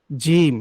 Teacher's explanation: জিমটা হলো জিহ্বার যে মধ্যখানটা আছে ঠিক তার বরাবর উপরে তালুর সঙ্গে লেগে উচ্চারণ হবে